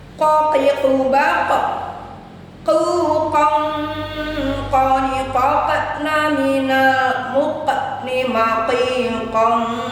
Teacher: Maka qof harus memantul dan ikhfa dua harakat.